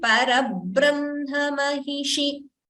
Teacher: we should not prolong it as Mahishi. It should be Parabrahma Mahishi because it is a short vowel.